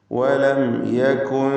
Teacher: സാക്കിനത്തായ മീം ഇൽഹാർ ഷഫവി നൽകി മണിക്കാതെ ഉച്ചരിക്കുക.